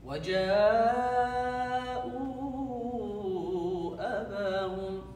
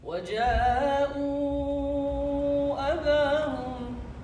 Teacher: So when you continue, you ignore the badal, the 2. You apply the munfasal. You at least stretch it 4 harakat